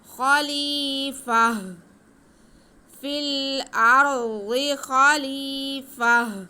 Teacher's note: ویسے عموماً دو زبر کا وقف جو ہے وہ ایک زبر کو ہٹا کے ایک زبر الف کے ساتھ پڑھی جاتی ہے، لیکن یہاں پہ الف کا کوئی سین نہیں ہے، یہاں پہ تا پہ وقف ہو رہا ہے تو ہم تا کو ہا میں بدل کر ساکن کر دیں گے تو وقف ہو جائے گا